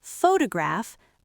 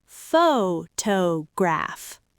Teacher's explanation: You stretch the vowel. If I say the word photograph, that first syllable is stretched. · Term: stressed syllable